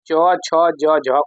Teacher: च, छ, ज, झ को स्पर्शी संघर्षी व्यंजन भी कहते हैं।